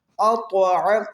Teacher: طا ساکن ہے، اس کے اوپر قلقلہ ہوگا، طا پر بھی پڑھا جائے گا موٹا